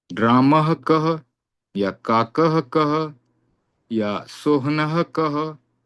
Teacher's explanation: विसर्ग के बाद जब क की ध्वनि होती है, वह ध्वनि जिह्वा के मूल से होती है, इसलिए उसे जिह्वा मूल्य क कहा गया।